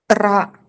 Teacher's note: റ എന്ന് വെച്ചാൽ നമ്മൾ ഉച്ചാരണ സ്ഥലത്ത് ഇങ്ങനെ കമ്പനം ചെയ്യുന്നു അവിടെ ഒരിക്കലും അവിടെ വിശ്രമിക്കുന്നില്ലല്ലേ അതേപോലെ വിശ്രമിക്കാത്ത ഒരു വർണ്ണമാണ് ഈ പറയുന്ന ഏത് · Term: ത്രാസം